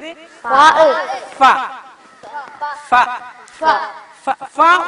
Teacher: അപ്പൊ രണ്ട് ചുണ്ട് കൊണ്ട് തന്നെ വ വ വ വ വ മഖറജ് ഈ ചുണ്ട് കൊണ്ടും മുൻപല്ലിന്റെ താഴ്ഭാഗം കൊണ്ടും പറയേണ്ട അക്ഷരം ഫ ആണ്.